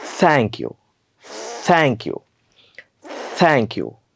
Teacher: जीभ जिभेवर वरचा दात ठेवायचा हवा पूर्ण पॅक करून टाकायची आणि हवा पुढे घासत सोडायची